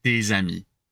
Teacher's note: So if you're hesitating, it's fine to do des amis, but create a Z. Imagine the Z sound is glued, is fused with that ami.